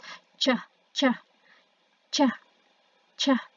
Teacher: Maksudnya adalah sedikit nutup, sedikit ngebuka, or 50-50. Contohnya itu adalah voiceless post-alveolar affricate.